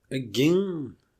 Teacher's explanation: when there's a vowel followed by a nasal stop, it becomes assimilated to the following sound, which is a case of regressive assimilation. So the vowel becomes nasal.